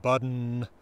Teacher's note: Something like button, the N at the end is really functioning as a vowel.